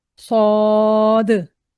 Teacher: आखिर में दाल भी आती है तो इसलिए दाल पर हम कलकला भी करेंगे स्वाद इस तरह से हम अपनी आवाज को इसकी अदायगी करके और दाल पे जिस तरह से रोकेंगे तो कलकला वाला साउंड करेंगे।